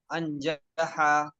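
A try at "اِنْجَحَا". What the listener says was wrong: हाँ, जबर नहीं आता है, जेर आएगा हमजा पे, या तो जेर आएगा या पेश आएगा, जबर नहीं आएगा।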